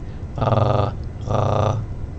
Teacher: you're moving the back of your tongue to not quite close off and prevent any air but making a smaller and smaller opening to create some vibration you might think of a purr sound of a cat going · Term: the french r